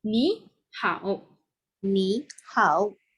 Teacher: the first one we will change it to the second tone